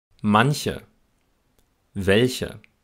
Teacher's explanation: Die Buchstabenkombination CH spricht man außerdem nach Konsonanten als Ich-Laut aus.